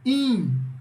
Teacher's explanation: Porque o som do N, ele não sai pela boca, ele sai pelo nariz. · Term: dígrafo vocálico